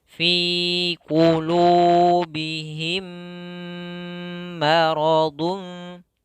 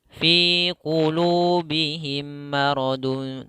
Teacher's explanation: Cara bacanya adalah menahan suara mim yang kedua dengan dengungan atau dengan gunnah 2 harakat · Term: idgham mimi